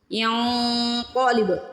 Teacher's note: قاف کو موٹا پڑھنا ہے اور با کو ہلا کے ادا کرنا ہے،